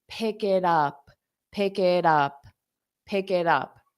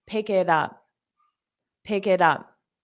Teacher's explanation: native speakers when we have T's between vowels we pronounce it as a soft D and we only do this to help smooth out pronunciation it's